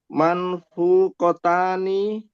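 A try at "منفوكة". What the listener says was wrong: Manfu panjang Pak, ada waw sukun kan?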